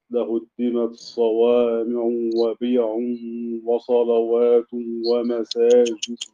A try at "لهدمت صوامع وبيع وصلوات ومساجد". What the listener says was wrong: إضغام التاء في الصاد والعين مرفوعة ليست منونة لأنها ممنوع من الصرف.